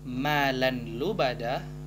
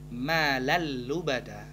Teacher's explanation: Maka hukum bacaannya menjadi idgham bila gunnah, idgham tanpa dengung. Maka untuk membacanya bukan dengan malan lubada, namun jika digabung dia menjadi malal lubada.